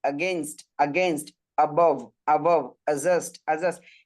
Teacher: আগেনস্ট আগেনস্ট অ্যাবভ অ্যাবভ অ্যাডজাস্ট অ্যাডজাস্ট পরের যে অংশটা আছে আর পরের যে অংশটা আছে এটার মধ্যে একটা স্ট্রেস দেয় স্ট্রেস মানে কি একটা চাপ আগো আগো আগো against against above